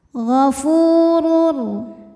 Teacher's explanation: ada wau sukun didahului baris dhamah maka huruf Fa panjang dua harakat ghafurur huruf ro dibaca secara tafkhim sebab berharakat dhamah tanwin maka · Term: Mad Thobi'i